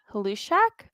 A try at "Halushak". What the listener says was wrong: I believe they want to say Lushak. The H is Lushak. The H is silent.